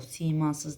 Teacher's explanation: Simasız sözündə i də uzanır, a da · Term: sayt uzanması